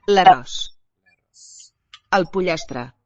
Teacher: the A is also very bright sounding here, close, meaning more toward E than toward a back vowel